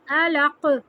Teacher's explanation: اور قاف پہ قلقلہ کریں گے یعنی جھٹکا.